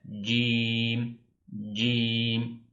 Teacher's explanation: Türkçedeki eee C harfine benzer olsa da eee burada şöyle bir ufak bir ayrıntı var. Dilimizin ortasını üst damağa değdirerek şiddetli bir harf bu bir kuvvet var kendisinde. Cim cim dilin ortası üst dama diyecek.